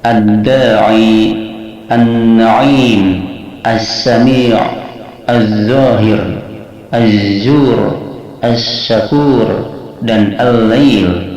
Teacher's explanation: Jadi 'lam' tidak diucapkan atau diasimilasi. Surat tersebut digabungkan ke dalam surat berikut. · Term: Idgham Shamsiyah